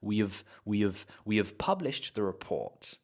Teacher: what I'm doing is I'm not even saying the H I'm not saying we I'm saying we we have we have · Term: weak form